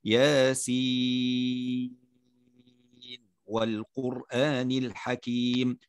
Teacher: فمن هذا الطريق اللي هو طريق الشاطبية يظهر النون، يظهر النون في هذا الموضع. أما من طريق آخر، من طريق طيبة النشر، فإنه يدغمها، لكننا قلنا أن شرحنا موافق لرواية حفص عن عاصم من طريق الشاطبية. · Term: إظهار رواية